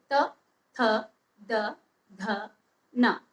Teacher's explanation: अब त वर्ग का उच्चारण करते समय, इसके पांचों वर्णों का उच्चारण करते समय हमारी जो जीभ है हमारे दांतों में जाके लगती है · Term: दंतव्य